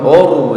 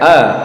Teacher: hamzahnya tidak boleh ditebalkan ya. Ini yang tebal ra sukunnya. Kalau hamzahnya tetap a, jangan kemudian bersuara o ya. Jangan or ya.